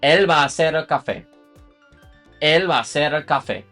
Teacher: So again, va a hacer, you're going to merge all of those into ba.